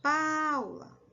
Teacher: Então, pá é o mais forte. Então, percebe que a sílaba que mais demora a ser pronunciada é a pá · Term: sílaba tônica